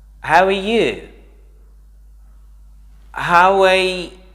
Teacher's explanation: We don't put the R sound, especially in British English.